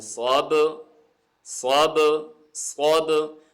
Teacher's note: با بھی یہ ان حروف میں سے ہے جس کے اوپر ویبریشن ہوتی ہے، قلقلہ ہوتا ہے، جنبش ہوتی ہے. ٹھیک ہے، تو اس کی آواز کو بھی ایسے ہلائیں گے صوب صوب صوب.